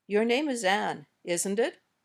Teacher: We can say these questions with two different kinds of intonation, and the intonation changes the meaning of the question. When we use rising intonation, we're saying, I really don't know the answer. I'm not sure what you'll say.